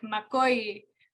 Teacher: you do need to go up in the middle or you're going to sound like you're saying it a little